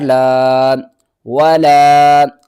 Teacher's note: ہم نے ہرگز نہیں کھینچنا، اور لام کے بعد دیکھیں تو الف کے اوپر چھوٹی مد ہے، تین الف کے برابر کھینچ کر پڑھنا ہے